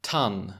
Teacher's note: Oh, there's more air with ton. So your tongue is not obstructing the t, but maybe it was with the d.